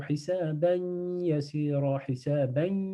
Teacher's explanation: on appuie sur le ya parce qu'il y a idgham ici